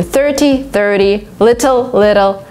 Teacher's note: this T converts to D all the time.